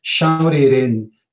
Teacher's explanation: The t actually becomes a flap